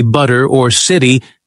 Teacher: That t flips to a quick D. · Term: flap T sound